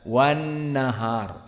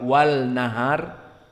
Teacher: Maka dari ilmi tajwid yang kita dapatkan hukum mad tabi'i bukan mad arid li sukun, dan juga permasalahan wan nahar, maka nun di sini musyaddadah berarti wujubul idgham, dan idgham makhrajnya wujubul gunnah, dan makhrajnya juga harus khaysum, dan alif lam asyamsiyah wan nahar, maka alif sukut wa kadzalika lam jatuh, tidak dibaca alif lam, langsung kepada nun musyaddadah wan nahar, tidak wal nahar.